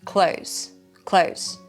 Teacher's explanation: You can just drop the TH and say clothes